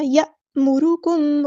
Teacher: रॉ हमारा heavy letter है पूरा अदा करेंगे क्योंकि ऊपर ज़म्मा आया है, यानी पेश आई है।